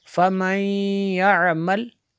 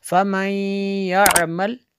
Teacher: नून साकिन के बाद या और फ़िअल मालून में से है, तो यहाँ पे इदग़ाम होगा।